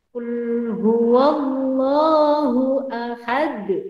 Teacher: Jadi qalqalah kubro terjadi apabila huruf-huruf qalqalah hidup dibaca sukun karena berhenti ada tanda wakof. Bacaan pantulannya itu lebih kuat daripada qalqalah sugro.